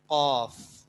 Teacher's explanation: زبان کی جڑ اور کوا جب آپس میں مل جائے تو قاف ادا ہوتا ہے